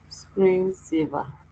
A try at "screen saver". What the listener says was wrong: Separate the two and pronounce again.